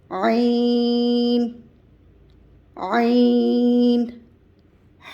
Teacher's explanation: عین ہا کی طرح درمیانے حلق سے ادا ہوگا. عین، عین. ہا کی ادائیگی ہم نے درمیانے حلق سے کی تھی، لیکن اس میں ہوا کا اخراج باہر کی جانب کیا تھا، تب ہا کی آواز آئی تھی، ہا کی ادائیگی ہوئی تھی.